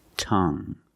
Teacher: You have only the nasal sound. There's no g. It's just the sound Tongue.